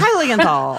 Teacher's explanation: get the high out as the main syllable and then just every other sound in the alphabet, just let that trail off.